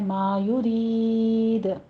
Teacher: آپ نے دونوں ہونٹ گول کر لینے ہیں، رید یہاں پہ را باریک پڑھتے ہوئے آگے یا مدہ کھینچنی ہے · اور اس کے بعد چونکہ ہم وقف کر رہے ہیں تو مد عارض وقفی ہوگی، یہاں پہ آپ نے 6 کاؤنٹ کر لینے ہیں